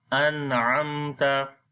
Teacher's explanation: نون کے اوپر اظہار کرنا ہے، میم کے اوپر اظہار شفوی کرنا ہے، دونوں کو نون اور میم کو ظاہر کر کے پڑھنا ہے، غنہ نہیں کریں گے